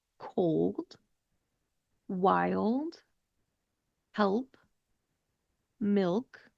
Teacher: Other examples with this rule would be cold, wild, help, milk. All of those have an L followed by a consonant, and that means you're going to be using that dark L